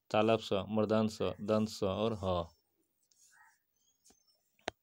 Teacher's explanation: दो उच्चारण अवयव इतने पास आ जाते हैं कि जिससे हवा का मार्ग सकरा हो जाता है और हवा संघर्ष के साथ बाहर निकलती है तो उसे संघर्षी व्यंजन कहते हैं।